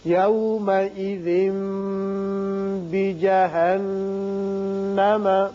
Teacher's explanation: تنوین کے بعد جب با آ جائے تو وہاں اقلاب ہوتا ہے اور میم کسی آواز نکلتی ہے، ایک الف کے برابر ٹھہرتے ہیں. یہاں نون مشدد پر بھی غنہ کریں گے